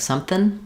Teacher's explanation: change the NG to an N sound, say it's something more like something instead of something.